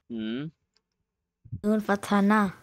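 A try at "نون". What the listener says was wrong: No. Noon does not have a fatha. Be careful, young man.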